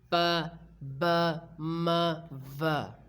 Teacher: अब हम place of articulation में लिप्स को सबसे पहले कवर कर रहे होते हैं. The sound that is produced by pressing the lips together is called bilabial